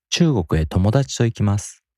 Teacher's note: ともだち is a newly introduced information, so the pitch reset occurs before it.